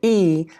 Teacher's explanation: when we say the e the tongue is high and it's front